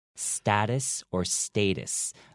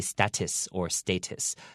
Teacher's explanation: The second T, you don't need to say that too harshly. You can actually make it a soft T.